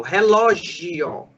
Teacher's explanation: O O é a vogal forte e o I é a semivogal. Olha como a semivogal é menor. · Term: ditongo crescente